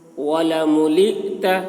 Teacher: حمزہ میں جزم ہے، جھٹکا لگے گا،